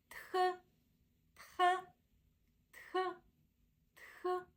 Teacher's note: in this case it's du d d so this one here it's a letter letter T but it's pronounced with aspiration so when we pronounce it we produce a strong burst of air and we're going to pronounce it as push it out push